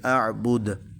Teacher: یہ دال حروف قلقلہ میں سے ہے، اس پر ہم نے چونکہ وقف کرنا ہے تو اس کے اوپر جزم لگائی، یعنی ساکن کیا دال کو، تو اس پر قلقلہ ہوگا، اس کو ہلا کے پڑھیں گے